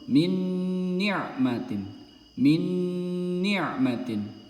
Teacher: Jadi huruf nunnya melebur langsung ke huruf nun selanjutnya terdapat tasjid dobel